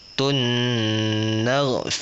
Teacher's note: mesti dua harakat Tun Dekat mana Dua harakat dekat Tun tu tunakum mesti panjangkan sikit bagi dia nampak dua harakat